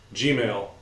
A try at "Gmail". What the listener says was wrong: It kind of sounded like you said G-email or something. Gmail.